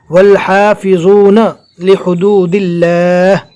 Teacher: اللہ کے نام کو باریک پڑھیں گے